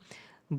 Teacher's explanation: ब बोलने से ऊपर का ओंठ और नीचे का ओंठ जो है टच होता है